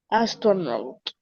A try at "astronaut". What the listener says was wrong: Nuevamente, astronaut. Que no se escuche la U, sino not. Astronaut.